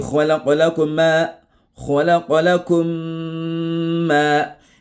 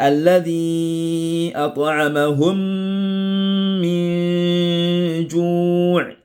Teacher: Il faut appliquer la ghunna puisque tu es dans le idghamu shafawi.